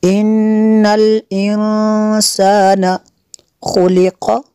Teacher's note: نون ساکن کے بعد سین ہے، حروف اخفا میں سے یہاں پہ اخفا ہوگا اس لیے غنہ کریں گے۔